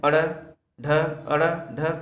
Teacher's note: हमारा जीभ मूर्धा को टच करके झटके के साथ नीचे आ जाता है, इसलिए इसे उच्छिप्त व्यंजन कहा जाता है।